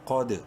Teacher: ساکن ہونے کی وجہ سے دال پہ قلقلہ ہوگا